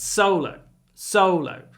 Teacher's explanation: actually the first syllable is stressed